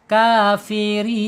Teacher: mad arid lisukun panjangnya dua harakat boleh, empat harakat boleh, enam harakat boleh